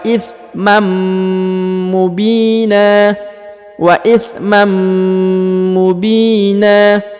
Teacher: huruf Bi dipanjangkan dua harakat ya Mubina karena di depannya terdapat Ya Sukun